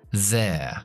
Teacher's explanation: Una E más una schwa. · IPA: /ðeə/